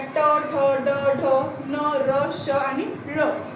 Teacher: बोलताना आपली जीभ कुठे? मागच्या साईडला वळते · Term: मूर्धा